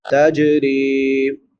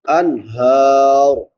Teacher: را باریک ہوگی، را کے بعد یا مدہ ہے، الف برابر لمبا